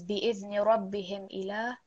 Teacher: there is no need here to prolong the meem sakin.